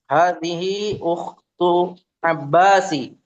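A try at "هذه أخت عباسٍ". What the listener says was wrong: Abbasin ditanwin.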